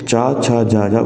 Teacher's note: ये स्पर्श संघर्षी व्यंजन के अंतर्गत आते हैं